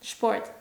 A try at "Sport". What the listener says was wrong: Not Sport. Sport. Also, don't overpronounce the R. That's when you sound French.